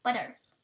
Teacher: the tap or flap in American English butter